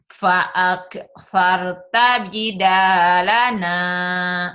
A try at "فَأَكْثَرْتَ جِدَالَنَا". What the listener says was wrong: Bukan kol-kolah tapi harus pecah. Bukan fa'ak, fa'ak, pecah. Fa'ak, example. Fa'aktsarta jidalana. Fa'ak, bukan. Ini mah kaf. Ini bukan kol-kolah tapi huruf-huruf hams.